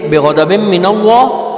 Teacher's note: اللہ کے نام سے پہلے زبر آ گئی ہے تو اس کو ہم نے موٹا کر کے پڑھ لیا